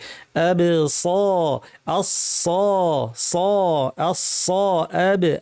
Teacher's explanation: জিহ্বার মাথাটা নিচের দাঁতের গোড়ায় লাগাতে হবে, তাহলে ধারালো শার্প আওয়াজটা হবে, যেটাকে সফির বলা হয়।